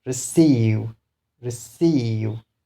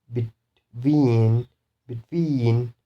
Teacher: So the stress will be on second syllable. So you should stress on this one.